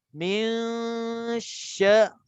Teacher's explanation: Min, dia 2 harakat dekat hidung dulu, sebab dengung tu keluarnya daripada hidung. 2 harakat dekat hidung dulu, habis 2 harakat baru dia pindah kepada shin.